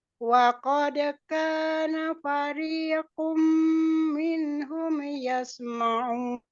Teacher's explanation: fariqun tanwin ketemu mim. Jadi dia idgham bi gunnah didengungkan.